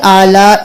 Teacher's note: یہاں پر 5 الف کے برابر آلاء کو کھینچیں گے